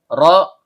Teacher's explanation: ujung lidah bertemu dengan langit-langit bagian belakang